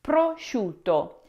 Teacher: the final O is short and crisp, not like the long toe in English. Now, speakers tend to stretch it out by habit, but in Italian, it needs to end neatly with a clean O sound.